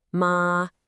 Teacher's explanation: Say it high and flat, ma, and you're saying mother